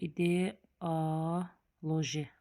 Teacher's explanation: Deməli, ideoloji sözündə ideoloji. İdeoloji vurğu axıra düşür.